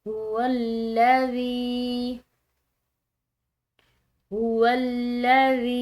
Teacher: ज़ाल ये नरम हरूफ में से है, इसको अदा करते हुए सीटी की आवाज़ या किसी किस्म की सख्ती ये नहीं होनी चाहिए, बल्कि बिल्कुल नरम जो है इसको अदा करना है। · इस या साकिन को हमने खिंचाव दिया है क्योंकि ये या साकिन या मद्दा है। इसकी अलामत ये ज़ाल की जो है ये ज़ेर है कि या साकिन का पीछे वाला हर्फ अगर मकसूर आ रहा हो तो वो या साकिन या मद्दा कहलाती है और उसको एक अलिफ के बराबर खिंचाव देकर अदा किया जाता है।